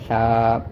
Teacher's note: سا کو پڑھتے ہوئے زبان کی نوک کو دانتوں کے درمیان رکھیں گے تو اس سے آپ کی سانس منہ سے ذرا تھوڑی سی باہر آئے گی